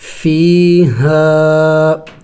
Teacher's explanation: کھینچیں گے، ایک الف کا مقدار لمبا کریں گے، فیہا، دیکھیں الف مدہ بھی ہے، الف سے پہلے زبر ہے اور چھوٹا مد بھی ہے، تو ایک الف کے مقدار سے تھوڑا سا اور بھی زیادہ لمبا کریں گے